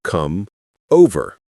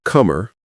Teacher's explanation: Non-natives say come over with clear separation. Natives say comer, almost like one word. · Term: Linking consonant to vowel